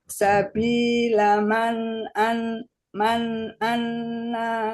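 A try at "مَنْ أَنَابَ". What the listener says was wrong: Gak ada tasdid di nun. Man anaba.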